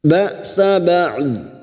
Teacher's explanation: Dhakum ba'sa ba'd, hamzah sukun jangan tertukar ain ya. Hamzah sukun sifatnya siddah, tertahannya suara.